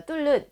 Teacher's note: 리을과 니은이 만났을 때는 우리가 유음화가 진행이 됩니다. 그래서 니은이 리을로 발음돼서 우리가 뚫는 이렇게 유음화가 진행된 발음이 맞는데 이제 적절하지 않게 표기가 되었고요.